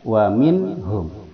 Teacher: tidak ada dengungan tidak ada kesamaran dia jelas waminhum ha itu berada di pangkal tenggorokan menuju pada mim di dua bibir